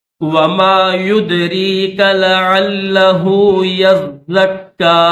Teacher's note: وما يدريك لعله يزكى، اس لفظ کو بھی دیکھیں کہ یا کے بعد جو ہے زا کے اوپر بھی تشدید ہے، زا مشدد ہے، تو اس کو بھی سختی کے ساتھ پڑھیں گے، اور کاف کے اوپر وہی 3 چیزیں ہیں جو لام کے اوپر تھی، تشدید، اوپر چھوٹا سا الف کھڑا زبر، اور چھوٹی سی مد منفصل۔